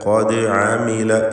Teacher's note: ദാലിൻ്റെ സുക്കൂൻ ഖൽഖല സുഗ്റ നൽകി ശബ്ദം ഹറക്കത്ത് പോലെ ചലിപ്പിക്കുക